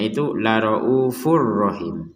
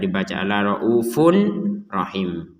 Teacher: Bert maka dibaca dengan dengungan ini namunengungkan Bert lagi di sini ada tanwin bertemu ro maka kita memasukkan kepada huruf ro ini untuk tanwinnya ini